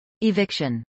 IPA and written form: ɪˈvɪkʃən (eviction)